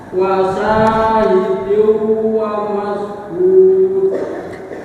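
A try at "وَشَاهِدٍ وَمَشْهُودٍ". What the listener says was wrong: Sinya kurang sempurna, patafasinya namanya ya. Wa syahidin wa mashhud.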